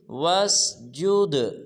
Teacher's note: جب جیم کو دال ساکن کے ساتھ ملائیں گے تو دال کو قلقلہ ادا کریں گے